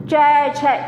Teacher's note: जीभ जब ऊपर को जाती है तो जो हमारी प्राणवायु होती है, सांस होती है, वो आपस में टकराती है, संघर्ष करके तब जाके बाहर निकलती है। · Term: स्पर्श संघर्षी